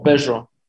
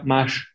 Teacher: en la Ciudad de México, había una tendencia bastante clara a cambiar las R's, R, como en la palabra perro, como en la palabra mar, las vibrantes en general, como en la palabra corro, por una, vamos a llamarle así, fricativa o una aproximante